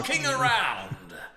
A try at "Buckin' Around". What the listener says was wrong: It's Buckin. There's no G on it.